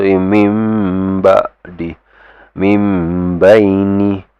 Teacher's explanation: no longer min, no longer having that nun sound. You need to give it a mim sound. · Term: iqlab